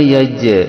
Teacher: jim sukun di tengah kalimat ini hukumnya adalah qalqalah sugro, dibaca memantul. Yajrimannakum, dikarenakan jim yang makhrajul hurufnya di tengah lisan mempunyai genap sifat.